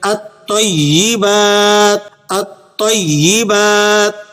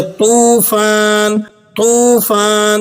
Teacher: تو کی ادائیگی اس طرح سے ہوگی کہ زبان کی نوک اوپر کے اگلے دونوں دانتوں کی جڑ سے لگ جائیں، لیکن اس کے ساتھ زبان کا جو درمیانی حصہ ہے یہ بھی ہلکا سا اوپر اٹھ جائے، جس سے آواز میں بھاری پن پیدا ہوتا ہے